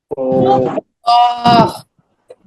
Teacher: জিহ্বার গোড়া তার বরাবর উপরে তালুর সঙ্গে লাগায়া উচ্চারিত হয় ক